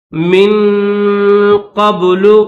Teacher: قاف کے بعد یہ با ہے، اس با کو ظاہر کر کے پڑھیں گے